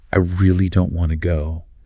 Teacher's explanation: >> [snorts] >> When a native speaker stretches out that word really elongating the vowel and dropping the pitch